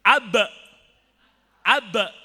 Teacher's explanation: Kalau sukun suaranya harus dipantulkan. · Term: qalqalah